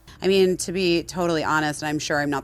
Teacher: And she did it in vocal fry.